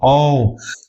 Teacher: और आपको पता है कि ह्रस्व स्वर के उच्चारण में कम समय लगता है। और औ ज्यादा समय लग रहा है। ज्यादा हवा निकल रही है। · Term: दीर्घ स्वर